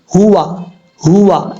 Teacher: یہ ہا بھاری ساؤنڈ کے ساتھ پڑھا جائے گا کیونکہ جس حلق سے ہا ادا ہوتا ہے اس حلق کا تعلق سینے کی طرف ہے